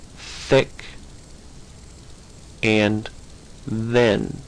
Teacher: Another is th and the. The tongue gets between the top and bottom teeth and says th or the, as in thick and then. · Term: linguo, for tongue, dental fricative